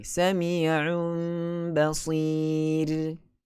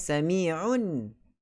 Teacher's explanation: Tak dengar huruf nun dah, tapi dengar huruf mim. Sebab itu letakkan mim kecil. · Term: iqlab